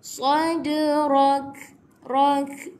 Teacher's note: Ada qalqalah sughra. Jadi kita kena buat lantunan, tapi lantunan dia kecil sahaja.